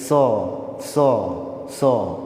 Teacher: दंत स, दांत में सटाकर हम लोग क्या है जी जीभ को दांत में सटाते हैं और फिर स का उच्चारण करते हैं